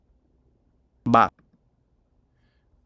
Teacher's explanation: you can hear the voicing. So this is the vibration of the vocal folds. So it's periodic. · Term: voice stop